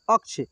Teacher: तो अ के बाद क का उच्चारण हो रहा है, फिर ये मूर्धन्य श का उच्चारण हो रहा है